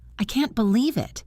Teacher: Low pitch, quiet, slow. That was disappointed, disbelief.